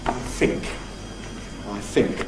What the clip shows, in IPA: fɪŋk